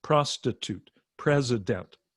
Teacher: starts with the p sound and ends with a t sound each one is three syllables with the stress on the first syllable